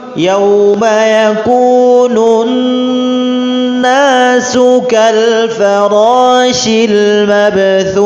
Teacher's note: ada gunnahnya pada huruf nun, harokat tasydid, gunnah ditahan, dengung 3 harokat.